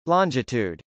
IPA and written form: lˈɑndʒətˌud (longitude)